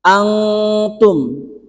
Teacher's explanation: nun mati bertemu dengan tak itu hukumnya adalah ikhfa Hakiki itu samar